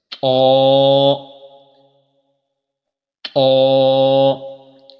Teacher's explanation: تا دال اور طا ان تینوں کا ایک ہی مخرج ہے، یعنی زبان کی نوک اور اوپر کے دانتوں کی جڑ سے۔